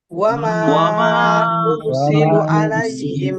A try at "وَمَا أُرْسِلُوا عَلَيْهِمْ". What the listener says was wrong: এখানে টান হবে ভাই একটু। وما أرسلوا عليهم